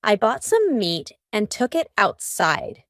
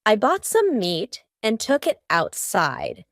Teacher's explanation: almost each of these words that end in t have a stopped T